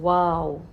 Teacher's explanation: نہیں کر رہی، اور سموتھلی ہماری آواز باہر آ رہی ہے۔ الف واو کے لیے ہماری ہونٹوں کی شیپ گول ہو کر باہر کی طرف آتی ہے اور پھر اندر کی طرف چلی جاتی ہے